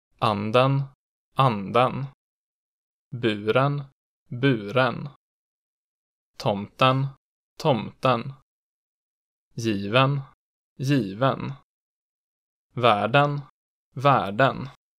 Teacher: In accent 2, it immediately peaks and then drops sharply on the stressed vowel before rising again on the unstressed vowel, peaking after it.